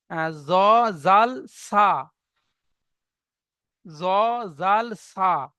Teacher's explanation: জিভের আগা এবং সামনের উপরে দুই দাঁতের আগার সাথে লাগিয়ে উচ্চারিত হয়